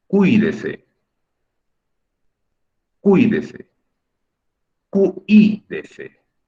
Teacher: Es la I la que estoy pronunciando más fuerte.